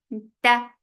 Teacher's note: The sound is short. Ta, sharp sound means no flow of sound. So the sound creates and it is ending very abruptly